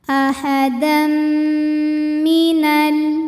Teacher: Karena ada tanwin fathah menghadapi huruf mim, maka bunyi tanwinnya masuk ke mim ahadam dan didengungkan. Jadi bunyi m-nya yang ditahan. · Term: idgham bighunah